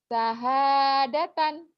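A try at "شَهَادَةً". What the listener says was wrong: Shin. Syahadatan.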